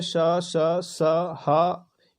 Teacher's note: ये 4 जो हैं ये रगड़ या घर्षण से उत्पन्न होते हैं